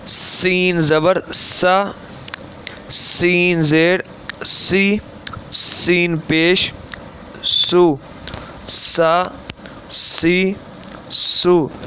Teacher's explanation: سین جو ہے وہ زبان کی نوک اور دونوں دانتوں کے اندرونی کنارے سے ادا ہوتا ہے، اور یہ ویسے بھی یہ حروف صفیریہ ہے، یعنی کہ سٹی کی آواز میں پڑھا جاتا ہے